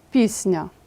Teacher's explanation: звук с також пом'якшується Отже ми це вказуємо у транскрипції так приголосний си став м'яким через сусідство із м'яким нь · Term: пом'якшуються